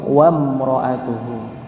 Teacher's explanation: karena ada wawunya dan dia hamzahnya hamzah wasal, maka langsung masuk ke mim